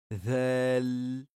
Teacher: Donc le zal, on va utiliser le bout de la langue qu'on va coller contre le bout des incisives supérieures